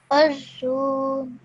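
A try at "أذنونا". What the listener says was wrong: Now over here, don't elongate the zu. Okay, it's azununa.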